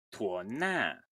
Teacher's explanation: Since it's a voiceless consonant, the high tone becomes high descending.